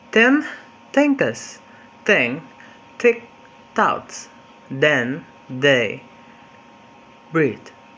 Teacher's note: D is voiceless while d is voiced, yet both places of articulation take place in interdental with the same fricative manner